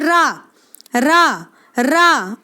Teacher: आप रा को बोल के देखें, आपको एक झटका लगता हुआ महसूस होगा और आप देखें कि आपकी जीभ कहाँ कहाँ टकरा रही है।